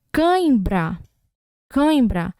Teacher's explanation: ditongo nasal que quando o ar ele passa pela boca e pelo nariz